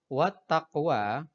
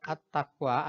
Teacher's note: at-taqwa ada alif lamnya tapi tidak dianggap atau tidak dibaca. Ini disebut dengan alif lam syamsiah.